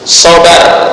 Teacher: Menghilangkan getaran ujung lidah secara total. Ujung lidah getarannya dihilangkan secara total. Misal sobar, ya, itu kurang tepat. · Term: menyembunyikan takhrir